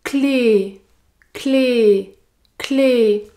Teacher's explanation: pour prononcer le mot clé vous devez prononcer un /e/ fermé